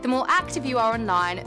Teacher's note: She does actually pronounce the R there in its strong form.